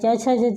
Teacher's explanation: च, छ, ज, झ तालु से बोले जाते हैं।